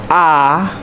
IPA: ɑ